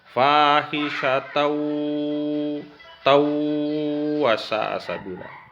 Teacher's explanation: Nah, apakah dia bertemu dengan ya, apa dia bertemu dengan mim, apa bertemu dengan nun, apa bertemu dengan waw, maka dia disebut idgham bigunnah. Cara bacanya itu dilebur dan didengungkan.